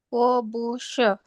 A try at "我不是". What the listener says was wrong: B dibaca P. Jadi bacanya bukan bu, tapi pu.